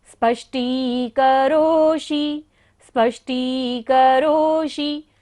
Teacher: करोषि में भी मूर्धन्य शा है, तो हमें बोलते हुए ध्यान रखना है कि उच्चारण हमारी मूर्धा से हो